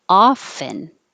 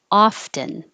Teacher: you can say this two ways you can say without the t often or with the t often